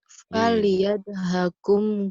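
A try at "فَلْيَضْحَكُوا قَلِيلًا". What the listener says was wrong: Haku. Fal yadhaku, jangan kum. Fal yadhaku qalilan. Fal yadhaku qalilan.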